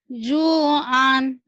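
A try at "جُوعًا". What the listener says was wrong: Gak ada yang panjang. Panjangnya Junyo dong.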